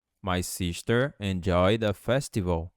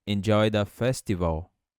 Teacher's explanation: Você vai fazer uma conexão juntando o D com A, ficando enjoy the festival.